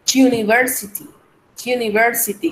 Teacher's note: En este caso, decir user, university o unicycle, no hacemos sonido vocálico.